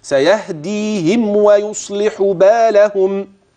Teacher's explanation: لاحظت إطباق الشفتين جيدا قبل النطق بالواو، ولاحظت أنه لا غنة فيها واضحة